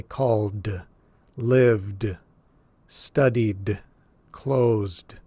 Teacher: when the word ends in a voiced sound, when your vocal cords are vibrating, then we pronounce this last D as the D sound